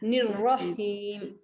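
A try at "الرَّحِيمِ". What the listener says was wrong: रह नहीं कहना आप, रह में मीन्स आपने हाथ से जोड़ भी दिया ना, नहीं, रॉ फिर हीम अलग अलग है, वाह यानी बीच में गैप दें, रहीम रहीम रहीम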